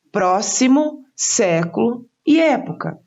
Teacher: por terem a sílaba tônica sílaba mais forte na antepenúltima sílaba são chamadas de proparoxítonas